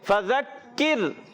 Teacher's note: فذکر، ماشاءاللہ زال کی ادائیگی زا سے نہیں بدلنا چاہیے، کاف کو باریک رکھیں گے، را باریک رکھیں گے، کیوں را ساکن سے پہلے زیر آ گئی۔